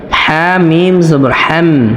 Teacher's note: হা অবশ্যই কন্ঠনারি বা হলকের মধ্যখান থেকে উচ্চারণ করতে হবে।